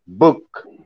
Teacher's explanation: the bilabial sound B when you pronounce book, okay, bilabial, you see, bilabial sound book, the picture, two lips, you see, book.